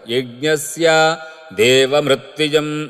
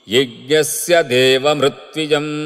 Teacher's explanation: ద్రవిడ పాఠం స్య కి దీర్ఘం చెప్పినట్లుగా వెళ్తారు